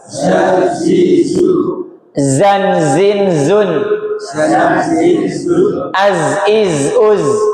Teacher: Gampang sekali kalau pas makhrajnya dia tidak nempel ujung lidahnya, dia ngambang berada dekat dengan gigi seri bawah atau di antara ruangan gigi seri atas dan gigi seri bawah. Suaranya mengalir lewat rongga-rongga gigi, makanya disebut dengan sofir. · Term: shofir